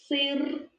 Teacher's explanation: перший звук с приголосний твердий позначаємо однією рисочкою визначимо другий звук сир другий звук и він голосний позначаємо кружечком